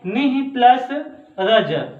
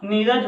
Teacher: पहले भाग में विसर्ग आता है और विसर्ग से पहले हास्य स्वर, जैसे छोटा अ, छोटी ई, छोटा ऊ और री आ जाता है और दूसरे भाग में रा आता है तो विसर्ग का लोप हो जाता है